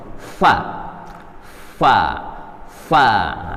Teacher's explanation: Huruf fa, bibir bawah bagian dalam pada posisi menempel pada gigi seri. Gigi seri atas nempel ke bibir bagian bawah. Fa. Nah, ini mudah insya Allah kalau fa ya.